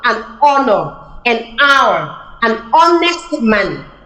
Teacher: So you realize that the H here is silent. The H sound is silent.